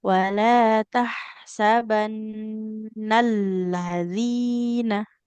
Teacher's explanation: sempurnakan dulu nun gunnahnya, baru lamnya kita tekan dan alirkan suaranya